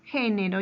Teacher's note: la palabra género lleva a su mayor fuerza de voz en la ante penúltima sílaba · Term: esdrújulas